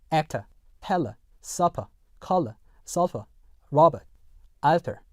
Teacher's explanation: 영국 영어 같은 경우는 어떻다? R 사운드가 들어가지 않는다라는 거 주의하시면 되겠습니다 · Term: 슈와